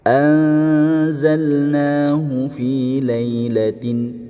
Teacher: Ingat dibaca samar dengan eh dengung kemudian jangan menjadi huruf Eng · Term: ikhfa